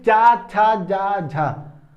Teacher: जो चा वर्ग है, क्योंकि इसके उच्चारण में हमको काफी अधिक संघर्ष करना पड़ता है, इसलिए हम इसको क्या कहते हैं? स्पर्श संघर्षी व्यंजन भी कहते हैं।